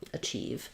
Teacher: achieve has second syllable stress the chief part is long that means that letter a is